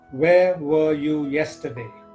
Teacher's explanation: have I used rising tone no I haven't I have used a falling tone · This is the WH question, and that's why my voice came down, fell down, or fell.